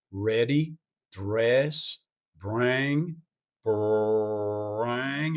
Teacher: And if you're looking at a pre-vowel R, ready, dress, bring, bring, it's that little bit further pulled back R, which you might think is more of a Southern R, sort of a Texas sort of R.